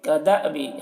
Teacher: حمزہ ساکنہ ہے، جھٹکا لگا کر پڑھیں گے